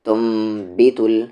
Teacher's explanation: lips کو جب دوسری بار میں الگ کرتے ہیں تو تھوڑے زور سے الگ کرتے ہیں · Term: اقلاب